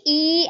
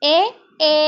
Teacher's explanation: the lips are spread when you say e and open and neutral when you say a